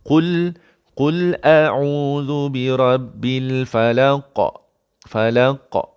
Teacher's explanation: Qalqalah besar. Kubra. Yes, kenapa kubra? Kerana di hujung bacaan.